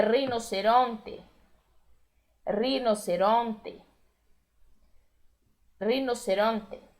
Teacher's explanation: o E com som de E lá no final, sem a gente transformar em I, que é rinoceronte.